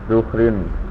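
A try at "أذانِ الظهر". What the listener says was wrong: Adani duhri. Ya, ada alif lam tidak ditanwin ya Mas ya.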